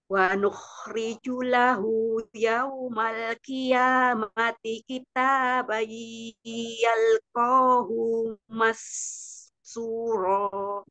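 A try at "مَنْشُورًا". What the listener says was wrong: Bukan mas tapi mansyura. Kemudian tadi dikata kitaban masuk hidung bayi. Kitaban yalqahu masyura. Syuro.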